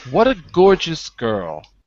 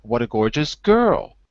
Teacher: and the stress can be the same so no difference but you can say what a gorgeous girl dropping or you can say what a gorgeous girl Rising